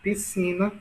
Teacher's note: veja que si é a sílaba mais forte, né? A sílaba tônica.